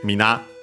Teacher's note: The accent is always on the last mora, on the na.